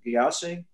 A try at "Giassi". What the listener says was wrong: Giassi, Your Honor, hard G.